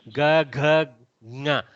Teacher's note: Those elements are all Ghoshas, we call them. Because there is a voicing in them. Ghosha means with voice.